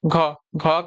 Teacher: कौन सा बताइए घ घ का उच्चारण स्थान क्या है तो घ जो है क वर्ग का चौथा वर्ण है इसका उच्चारण आपका कंठ हो जाएगा